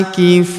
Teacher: Huruf Fu kita panjangkan 2 harokat karena waw sukun di depannya.